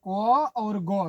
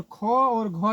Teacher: को और गो क्या है, अल्पप्राण है, और ख और घ क्या है, महाप्राण है